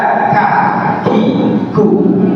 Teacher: Ada setiap ucapan huruf kaf ada udara keluar sedikit ya. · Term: hams